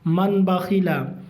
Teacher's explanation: है इकलाब इकलाब तनवीन या नून साकिन का कायदा नंबर तीन तनवीन या नून साकिन के बाद बा आए तो नून को मीम से बदलकर गुन्ना और इफा के साथ पढ़ेंगे